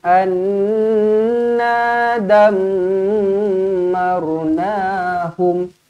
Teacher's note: Nun sabdu, mim sabdu, kedua-duanya kena dengung dua harakat, wajibul gunnah. Anna dammarnahum, pastikan na baca dengan panjang, ada alif kat sini.